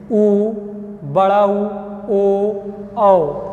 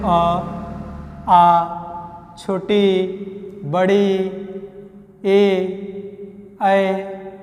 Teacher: इन्हीं 4 पर हमारा ओष्ठ की आकृति वृत्त के आकार की हो रही है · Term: वृत्ताकार स्वरों